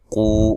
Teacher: قو واو مدہ ہے، قاف کو موٹا ادا کریں گے۔ واو مدہ واو ساکن سے پہلے حرف پر پیش ہو اس کو واو مدہ کہا جاتا ہے، اور اس کی مقدار 1 الف ہوتی ہے۔